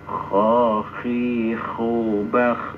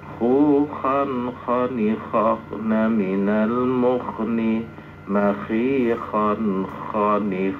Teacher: jadi kha harus betul-betul ada ngoroknya ya